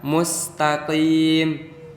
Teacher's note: mustaqim itu tidak ada penebalan soalnya itu hurufnya Shin sa jadi tidak ada yang ditebalkan